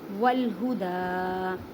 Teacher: دال کو ایک الف کی مقدار میں کھینچ کر پڑھیں کیونکہ اس کے پر کھڑی زبر ہے